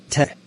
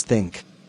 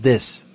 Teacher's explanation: Dental made with the tongue pushing up against the top front teeth.